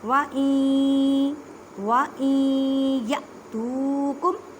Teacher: حمزہ ساکن ہے، اس وجہ سے یہاں پہ جھٹکا دے کے پڑھیں گے